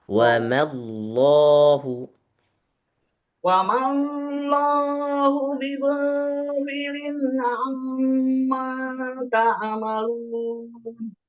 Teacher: Wa ma Allahu, ma jangan dipanjangin.